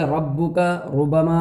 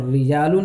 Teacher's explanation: جس طرح سے ربک، ربما اور رجال کی را کو پر اور باریک پڑھا جاتا ہے، یعنی ربک ربما کی را کو پر پڑھا جاتا ہے، رجال کی را کو باریک